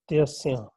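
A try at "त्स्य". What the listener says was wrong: Not tasya. There is no tau letter at all. Tasya. Like in the word matsya. Matsya.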